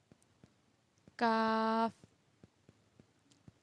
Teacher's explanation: زبان کی جڑ جب اوپر کے تالو سے لگے تو ادا ہوتا ہے۔ دونوں میں فرق یہ ہے قاف میں ہم ہونٹوں کو گول کرتے ہیں اور کاف میں نہیں کرتے۔